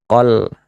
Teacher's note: Hukumnya alif lam qamariah. Maka dibaca jelas huruf lam sukunnya.